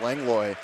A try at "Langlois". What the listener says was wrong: I think he pronounces the S. Like, it could be either way, but I think it's Langlois.